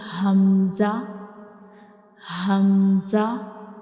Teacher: we pronounce hamza from the bottom of the throat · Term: throat letter